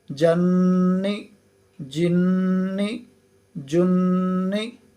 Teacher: نون کے اوپر بھی تشدید آ گئی ہے تو اسے بھی ہم نے ناک میں آواز ایک الف کے برابر روک کر پڑھا ہے، جو کہ غنہ کہلاتا ہے